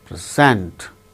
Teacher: Present, the first syllable gains stress, present. Present, when it is used as verb, the second syllable gains stress, like present.